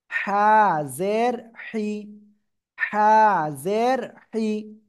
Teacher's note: গলাটা চেপে হালকা বাতাস বের করে উচ্চারণ করবেন।